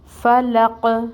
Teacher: اور قوف پہ ساکن ہے، قلقلہ ہوگا، آواز باؤنس ہوگی